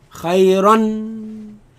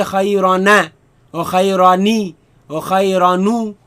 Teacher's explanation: Tanween is a noon. Is a noon sukoon. You just cannot see it. But it is, you hear it, khayran. You don't say khayrana or khayrani or khayranu.